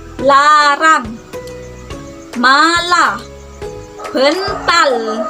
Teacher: L termasuk ke apiko alveolar karena dihasilkan di ujung lidah dan gusi.